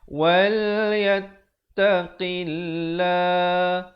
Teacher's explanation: Lafzul jalalah, perkataan Allah, kalau datang sebelumnya baris kasrah dibaca nipis. Wal yattaqillah dengan 2 harakat.